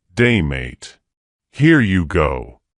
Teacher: Rising intonation when your voice sort of goes up at the end like that at the end of sentences · kind of going up at the end of a sentence